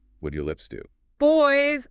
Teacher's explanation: A B is a bilabial sound, meaning it requires both lips.